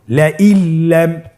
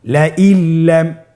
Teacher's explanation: নুন সাকিনকে আমাদেরকে পরবর্তী হরফের সাথে মিলিয়ে গুণা ছাড়া পড়তে হবে